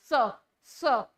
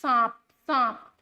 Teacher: जब भी आपको ये सपेरा वाला स बोलना जाए ना तो इस स को बोलने के लिए अपने जीवा को अपने दांतों से टच करवाइए